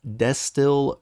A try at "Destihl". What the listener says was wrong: I think crazy on the emphasis. Is there a reason that you pronounce it that way? It's just distill,